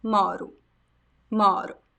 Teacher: The stress is not at the last O, it is on the first O